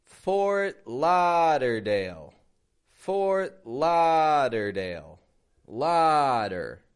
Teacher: Stretching that la right out.